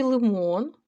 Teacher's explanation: в слові лимон ли твердий